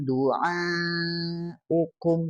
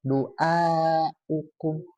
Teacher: huruf ainnya agak masuk ke hamzah